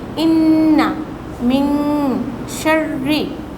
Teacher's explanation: the noon with jazm is sometimes concealed and pronounced from the base of the nose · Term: gunna